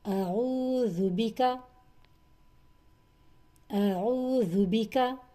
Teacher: آ اور او عین سے شروع ہو رہا ہے. او جو ہے یہ وسط حلق کا حرف ہے، عین